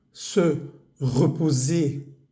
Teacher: Se, reposer, la R no se pronuncia. Y la S entre vocales vibra